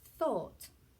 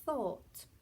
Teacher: my tongue comes out. Thought. It touches my teeth. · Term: the th sound